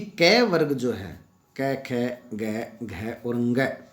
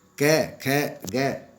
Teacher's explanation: ये कै ख जो कै वर्ग है वो कंठ्य है। संस्कृत में इन्हें कंठ्य माना जाता है और इसलिए माना जाता है क्योंकि इनका उच्चारण स्थान कंठ है।